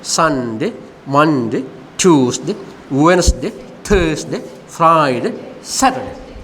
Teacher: all the weekdays should be pronounced with a stress on the first syllable. Sunday, Monday, Tuesday, Wednesday, don't say Wednesday, Wednesday, Thursday, Friday, Saturday, not a Saturday, Saturday.